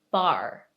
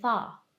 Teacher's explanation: British accented people would say far right so there's no R sound